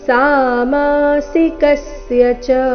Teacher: ದ್ವಂದ್ವ ಸಾಮಾಸಿಕಸ್ಯ ಚ ಕಸ್ಯ ಕ ಮೇಲೆ ಆಘಾತ